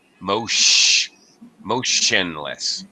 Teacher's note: the T is pronounced like sh actually not like a t at all